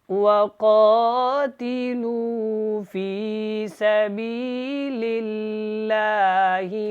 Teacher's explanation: یہاں پہ دیکھیں کاف موٹا ہے اور لو کو تھوڑا سا لمبا کریں گے